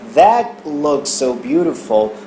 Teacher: ele não pronuncia o T final de that